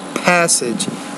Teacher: when you say the P, passage, you have to pronounce that with more air